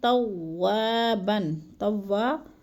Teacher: توابن، توا الف مدہ ہے، ادھر الف خالی سے پہلے واو کے اوپر زبر ہے تو الف مدہ. الف مدہ کو بھی ہم نے 1 سے 2 الف کے برابر لمبا کر کے پڑھنا ہے. اور توابن جو ہے ادھر وقف کی صورت میں بن نہیں پڑھیں گے، بلکہ کیا کریں گے، ادھر 2 زبر کو 1 زبر میں بدل کر پڑھیں گے.